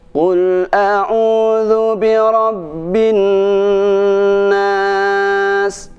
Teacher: pada bacaan bin nas inilah pada huruf nunnya itu harus ditahan sampai 3 harokat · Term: dengung